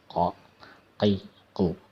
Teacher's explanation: Jadi makhrajnya, tempat keluar hurufnya adalah di tenggorokan bagian bawah.